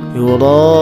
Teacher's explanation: mad tabi'i menghadapi hamzah dalam satu kalimat dibaca panjang, ini 6 harokat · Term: mad wajib mutasil